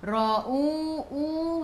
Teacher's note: Ra baca dengan tebal, ra baris atas, bacaan ra-nya tebal